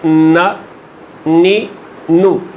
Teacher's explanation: सामने वाले 2, इधर वाले 2 जो ऊपर वाले हैं, यानी इधर में अनियाब शामिल नहीं है। उनके मसूड़ों से नोके ज़ुबान से नून अदा होता है।